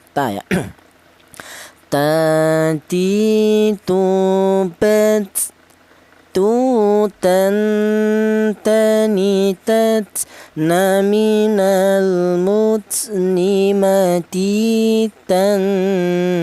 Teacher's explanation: huruf berasal dari ujung lidah menyentuh pangkal gigi sehari atas ya. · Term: Huruf ta, huruf ta